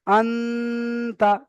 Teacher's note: নুন সাকিনের আওয়াজকে নাকে তুলে একালি পরিমাণ গুণনা করে পড়তে হবে